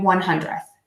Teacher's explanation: And to do that, I just stick my teeth, I stick my tongue out of my mouth a little bit and I don't touch my teeth. And then that way the air can keep moving out of my mouth.